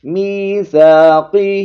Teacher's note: ہاں کے نیچے کھڑی زیر ہے، اس کو تھوڑا سا کھینچیں گے. میثاقہ وَيَقْطَعُونَ، قوف حروف مستعلیہ میں سے بھی ہے، اس کو موٹا پڑھیں گے، اور یہاں پر قوف پر جزم آ گئی ہے تو قلقلہ بھی کریں گے.